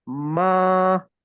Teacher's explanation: Fatha followed by alif makes two counts. And this is a long vowel.